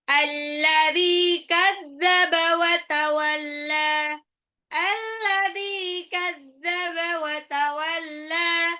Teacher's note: Alladzi zalnya 2 harokat mad tabi'i wa tawalla lamnya juga 2 harokat mad tabi'i